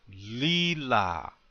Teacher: Accent on the first syllable.